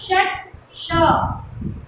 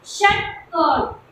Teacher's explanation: आगे की जीभ हमारी तालु के आगे के भाग को स्पर्श कर रही है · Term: मूर्धन्य श